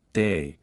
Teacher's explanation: Australian English. This accent is known for its distinctive vowel sounds such as a more open uh in words like day